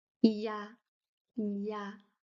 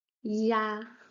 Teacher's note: E plus A. That is pronounced ya, ya, with a little slide of the tongue